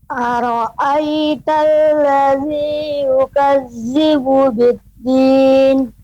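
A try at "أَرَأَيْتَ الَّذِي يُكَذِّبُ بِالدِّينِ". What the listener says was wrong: Ya, huruf zal, yukazzi. Tadi masih terdengar huruf zai. Yukazzi. kurang tepat Bapak pengucapannya yukadzibu.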